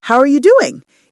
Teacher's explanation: How are often becomes how with a little W sound to link the word smoothly.